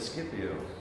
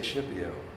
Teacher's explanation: And so we changed the SK to an SH sound.